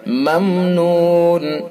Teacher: میم ساکن کے بعد نون ہے تو اس کے اندر اظہار ہوگا، اور اس اظہار کو اظہار میم ساکن کہتے ہیں، اظہار شفوی بھی کہتے ہیں۔